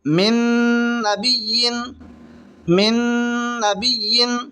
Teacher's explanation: نون ساکن ہے، نون ساکن کے بعد میں نون آ رہی ہے، تو یہاں پر گنہ کے ساتھ ملا کر پڑھیں گے، اس کو ادغام مال گنہ یا پھر ادغام ناقص بھی کہیں گے، من نبی۔